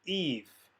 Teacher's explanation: we are going to pronounce it with a v sound which is how modern speakers of hebrew pronounce it